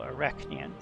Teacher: the emphasis is definitely on the second syllable